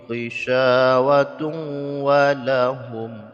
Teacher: dengan jelas tanpa didengungkan tanwin bertemu dengan wau hukumnya idgham bighhunah Jadi dimasukkan bunyi tanwin ke dalam wau